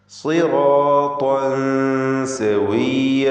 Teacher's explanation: സി എന്ന് പറയുമ്പോൾ സ്വാദിന് കസ്റുള്ളത് കൊണ്ട് കുറഞ്ഞ തഫ്ഖീം കൊടുക്കുക. റാഇനും അലിഫിനും പൂർണ്ണമായ തഫ്ഖീം.